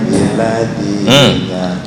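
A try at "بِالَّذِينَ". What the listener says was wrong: Lamnya jadi nggak kebaca. Bukan billadzina tapi billadzina.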